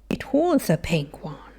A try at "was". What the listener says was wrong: I would say it was, but with your accent, it was. It sounds fine.